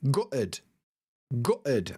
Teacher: in my accent, we use a glottal stop, so I say gutted, gutted, and I don't pronounce the T's in the middle